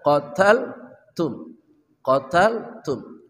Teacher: ta dari ujung lidah bersama gusi gigi seri atas dibaca hams